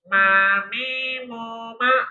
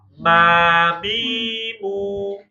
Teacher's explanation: Kalau mim balik lagi ke makhraj utamanya bibir.